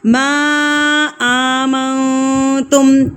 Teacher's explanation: مد منفصل یعنی کہ چھوٹی مد کہلاتی ہے. اس کو ہم نے 3 حرکات کے برابر کھینچ کے پڑھنا ہوتا ہے